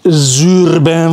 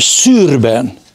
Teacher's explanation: ugyanaz a képzési hely csak az egyikre adok zöngét a másikra nem